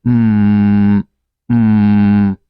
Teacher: It's a nasal sound because the sound must come from your nostril.